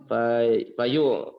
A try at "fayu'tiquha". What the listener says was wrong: Hadza khata. Fayatiquha. Ini kebalik ya sebab taknya qafnya diganti tak, taknya diganti qaf.